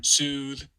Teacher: the thing that gets you confused easily is the frontish F2 of the oo, the fronted oo here